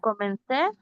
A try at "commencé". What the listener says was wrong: Digo así, comencé. La N suena an. Acentuó esa E.